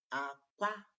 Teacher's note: when you begin with a lower tune and end in a higher tune, aqua, which means low to high, you are referring to egg.